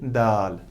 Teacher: जबान की टिप और आगे वाले दो दांतों के अंदर मसोड़ू जिनको बोलते हैं उनके साथ मिलाना है